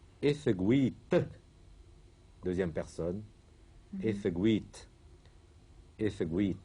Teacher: Bien qu'on ait un i long, le T reste prononcé T.